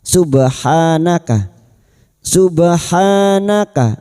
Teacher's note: ba sukun yang mati asli di tengah kalimat qalqalah sugra. Jangan lupa dipantulkan.